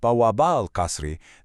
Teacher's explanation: The word for two doormen is bawabani, but when you say the palace's two doormen, bawaba al-Qasri, that nun-e-Arabi just drops right off. Bawabani becomes bawaba.